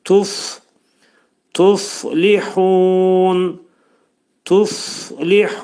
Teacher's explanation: Fənin məxrəci dediyimiz kimi yuxarı üst işlə at dodağın arasından və hava axını burada şiddətli çıxacaq. Tuf tuflihun tuflihun bura li incə samitdir.